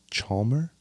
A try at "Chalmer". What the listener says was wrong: You're close. It's Chalmer. You kind of like skip over the L a little bit. Chalmer.